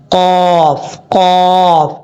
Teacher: قاف کا مخرج ہے جو دو نقطوں والا قاف ہے، اس کا مخرج زبان کی جڑ اوپر والے تالو کے نرم حصے سے لگے تو قاف پڑھا جاتا ہے